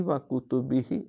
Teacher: کھڑی زیر ہے لہٰذا ہی کو لمبا کریں گے